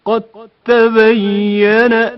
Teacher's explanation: دال ساکن کی آواز واضح طور پر سنائی نہیں دیتی، اس کے بدلے تا کی آواز تشدید کے ساتھ ادا ہوتی ہے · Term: ادغام متجانسین